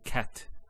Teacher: So we say cat. So the T doesn't have any vowel associated with it. It's actually just a stop on the T. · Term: sukoon